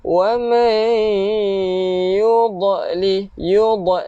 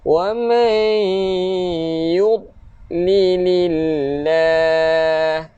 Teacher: dot kita tak boleh lantunkan sebab dia bukan huruf qalqalah